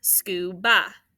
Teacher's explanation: would you do that first syllable sk and then ba scuba you hear that uh sound it's not that short u at the end